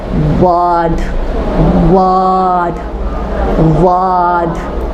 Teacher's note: دیکھو او نہیں اٹھا رہی ہوں، آ اٹھا رہی ہوں.